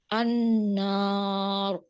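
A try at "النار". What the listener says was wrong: La, tidak. An-nar. La, ucapkan an-nar. Alifnya masih tebal. An-nar. Ya, alifnya. Jangan baca dulu ra-nya. Baca sampai alif saja. Anna.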